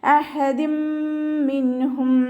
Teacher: തെൻവീനിലുള്ള നൂനിൻ്റെ സൗണ്ടിനെ മീമിലേക്ക് ലയിപ്പിച്ച ഉന്നയോടുകൂടി ഓതി കൊടുക്കുക. ലയിപ്പിക്കും ചെയ്യുക, അതോടൊപ്പം തന്നെ മണിക്കും ചെയ്യുക കേട്ടോ.